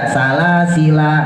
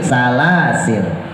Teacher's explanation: Nah, kalau dimatiin yang ayat keempat maka menjadi salasil. Kalau dimatiin, jadi nggak dibaca salasila, enggak, tapi salasil.